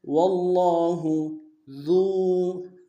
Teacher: ذال کو باریک ادا کرتے واو کے ساتھ ملانا ہے ، واو مد ایک الف دال میں کھینچیں گے، ذو فضل،